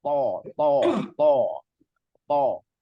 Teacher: tafkhim namanya yaitu tebal menghasilkan suara yang berat dan tebal